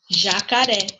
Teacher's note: Porque a última sílaba é a mais forte, é a sílaba tônica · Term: oxítona